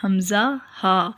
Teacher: حمزہ، ہا ادا ہوتے ہیں گلے کے آخر سے، سینے والی سائڈ سے ادا ہوتے ہیں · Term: حروف ہلکی